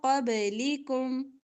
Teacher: من قبل با پر کلکلا ہوگا